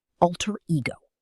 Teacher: 2 separate words, 2 clear stresses.